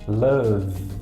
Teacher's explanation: Quando eu falo love, o meu V, ele dá uma vibradinha na boca. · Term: voiced